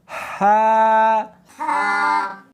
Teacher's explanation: اس کو حلق میں سے نکالنا ہے اور ساتھ میں ہوا بھی ہونی چاہیے، ہا۔ ہا نہیں پڑھنی بلکہ اس کو حلق میں سے نکالنا ہے، سینے میں سے نہیں نکالنا